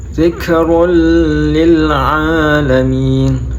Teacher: In huwa illa dzikrul lil. Itu ada domatain bertemu dengan lam, jadi dibaca idgham bila gunnah.